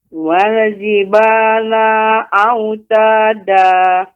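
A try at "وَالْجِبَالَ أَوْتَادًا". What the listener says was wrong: Lanya pendek, Ibu. Wal jibala autada. Lanya dibaca dengan pendek. Wal jibala autada. Ya, nanti terus dilatih Bu ya, lanya pendek.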